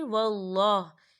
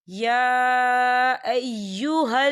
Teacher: यहाँ अल्लाह का नाम पुर पढ़ा जाएगा क्योंकि अल्लाह के नाम से पहले ज़बर है।